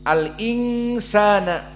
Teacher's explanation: Namun karena nun sakinah ini bertemu dengan sin, maka dia di sini ikhfa. Nunnya disembunyikan, tidak jelas, menjadi ing. Itulah makna ikhfa. Dan huruf ikhfa dibaca dengan gunnah.